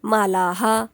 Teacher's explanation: आता आकारांत आहे म्हणून हा म्हणणार मालाहा लिहायचं नाही पण बोलायचं असत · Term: विसर्ग